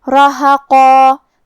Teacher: تو ہم قاف کو اور مد الف کو دونوں کو بھاری آواز میں پڑھیں گے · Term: تفخیم